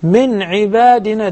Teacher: In verse number 65 فوجدا عبدا من عبادنا it's very obvious that we have إدغام with غنة we put a lot of emphasis on the غنة it should be two counts